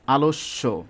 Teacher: এখানে যদিও বানানটা দন্তস জফালা কিন্তু এটা উচ্চারণ কেমন হচ্ছে এস এইচ এর মত আসতেছে